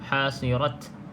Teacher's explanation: pastikan dia ada sedikit angin yang keluar tu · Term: Hamas